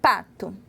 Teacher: O P, ele é plosivo, ó. Pato. Você sentiu um arzinho aí